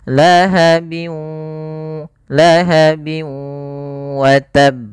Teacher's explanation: Kemudian di sini ini idghamnya juga kita namakan dengan idgham naqis. Tidak secara utuh hilang apa namanya tanwinnya, tapi masih menyisakan ada gunnahnya.